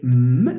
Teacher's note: the air does not go through the mouth. It goes through the nose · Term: nasal